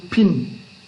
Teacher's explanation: when it comes in the beginning it will be aspirated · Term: aspirated sound